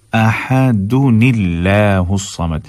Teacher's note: اب قُلْ هُوَ اللَّهُ أَحَدٌ، أَحَدٌ یہاں پر کیا ہے، تنوین ہے. تو اب تنوین کا جو نون ہے اس کو ہم آگے لام آ رہا ہے تو اس سے ملائیں گے